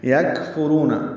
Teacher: یکفرون کاف ساکن ہے، نرمی سے پڑھا جائے گا، اس پہ ہمس ہوگا. فا کو جلدی پڑھیں گے، را پر پڑھیں گے، رو واو مدہ ہے، 2 حرکات لمبا کریں گے.